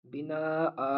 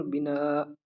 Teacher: بنا آ بھی پڑھ سکتے ہیں اس کو، آ کو کھینچتے ہوئے، اور بنا حمزہ کے اوپر ساکن بھی پڑھ سکتے ہیں۔ دونوں طریقے سے درست ہے، دونوں طریقے سے صحیح ہے۔